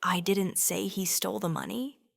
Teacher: stressing money means he stole something else entirely